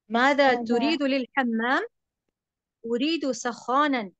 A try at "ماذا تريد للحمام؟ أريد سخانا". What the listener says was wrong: نعم ماشاء اللہ ممتاز.